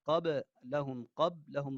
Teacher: یہ با ساکن ہے، اس با کے اندر قلقلہ ہوگا